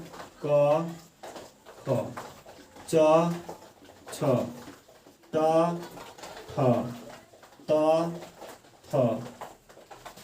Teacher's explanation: इसके उच्चारण में सिर्फ हमें क्या होता है कि श्वास की आवश्यकता होती है, कंपन हमें नहीं होता है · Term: अघोष वर्ण